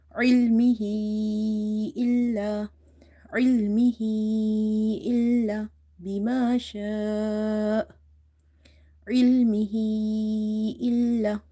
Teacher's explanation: So here will be madde munfasil. The amount of stretching is 2.5 alif.